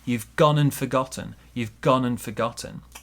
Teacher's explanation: we're going to link the n and the a here